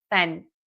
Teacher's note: My tongue also touches there for that T sound, fence. So when I'm pulling my tongue away from that N sound, moving to that S, you might hear a little T there. That is why that is happening.